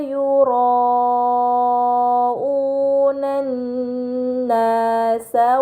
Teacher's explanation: terdapat mad bertemu hamzah dalam satu kata ini dinamakan mad muttasil maka harus dibaca panjang selama empat atau lima harakat